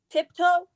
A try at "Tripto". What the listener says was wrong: Not Tipto, Tripto. T-R-I-P-T-O.